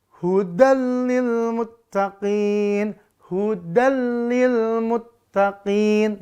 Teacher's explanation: yaumaidin khosiah dan seterusnya kalau idgam bilagunah di bab idgham terutama bunyi nun sukun atau tanwinnya maka dileburkan ke huruf lam dan ro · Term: Idam bila guna